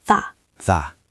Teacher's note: the T at the end of that usually disappears or becomes a stop